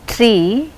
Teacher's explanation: front part of the tongue is raising and it is coming close to the hot palate and the lips are unrounded. So it can be said as front close unrounded vowels.